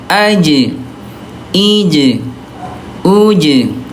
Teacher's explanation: ini huruf jim. Ya syiddah dia kuat dan qalqalah mantul